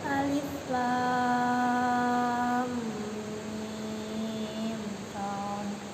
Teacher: Mimnya 6 harokat, idharkan ke shad. Shadnya 6 harokat, ada hamznya, ada qalqalahnya.